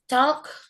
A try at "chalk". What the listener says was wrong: Is it chalk or chalk? L-nya jangan dibaca.